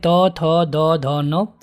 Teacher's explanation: दंत मतलब इसमें जीभ आपके दांतों को टच करती है